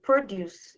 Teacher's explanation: the stress is on the first syllable. Produce. It's a noun which means fruits and vegetables.